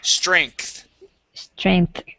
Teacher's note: Yeah, like a K. It's a K to a TH sound.